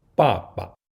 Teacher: Ba, However, when two Ba, characters are combined to refer to a father, the second Ba, changes from the fourth tone to the neutral tone.